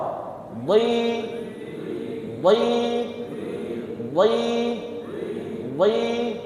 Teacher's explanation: Makhrajnya di mana? Pinggir lidah kita nyentuh gigi geraham bagian atas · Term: huruf dot